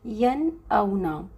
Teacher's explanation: نون کو ہم اس کے مخرج سے پورا کا پورا ٹچ کر کے واضح طور پر پڑھیں گے، ٹھیک ہے۔ اور ان کو ہم اظہار حلقی کا بھی قاعدہ کہہ سکتے ہیں، آپ کو یاد رکھنے کے لیے آسانی رہے گی، یعنی غنہ نہیں ہوگا۔